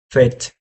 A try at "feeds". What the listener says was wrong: It's not that I can't recognize your voice, it's that you're saying fit instead of feeds. They sound different, you know? sure, you said fit. The spelling is F-I-T. Do you want me to spell feed? Because that's what you meant to say? F-E-E-E-D?